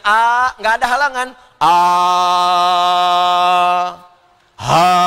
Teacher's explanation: Awas ha itu huruf yang mengambil banyak nafas.